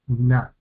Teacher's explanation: la nun con la vocal Kametz, que es una vocal larga, una A larga, entonces tenemos na.